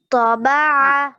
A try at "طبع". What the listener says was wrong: طبع، عین نہیں نکلا. طبع، اچھے سے عین نکالے.